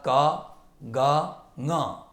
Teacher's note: प्रथम तृतीयः पंचमः अर्थात् क ग ङ, तथैव अन्तस्थाः यरलवाः एते सर्वे अल्पप्राणाः प्रयत्नाः